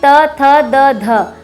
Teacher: त वर्ग का उच्चारण स्थान होता है दंत यानी दांत।